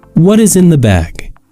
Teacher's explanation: This question ends in falling intonation, meaning that our voice should go down or be low at the end of the sentence.